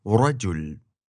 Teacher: has your tongue up where you'd say a D, but allows the flow of air to flap it up and down. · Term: rolled r